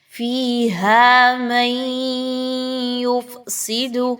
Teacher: نون کی آواز کو آپ نے یا کی آواز میں مدغم کرنا ہے، اور آپ نے یہاں پہ نون کی آواز کو غنے کے ساتھ یا کی آواز کے اندر مرج کرنا ہے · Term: ادغام ود غنہ